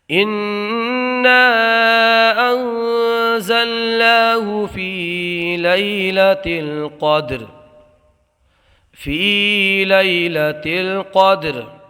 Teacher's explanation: اس والے یا ساکن میں یا لین ہوگا، بغیر کھینچے بغیر جھٹکا دیے نرمی سے معروف پڑھیں گے۔ قاف کو موٹا پڑھیں گے، اس لیے قاف حروف مستعلیہ میں سے ہے، اور حروف مستعلیہ کو ہمیشہ پر پڑھا جاتا ہے۔ دال میں قلقلہ ہوگا، را کو حالت وقت میں ساکن کر دیں گے۔